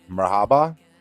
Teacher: each syllable is clearly enunciated with the primary stress placed on the second syllable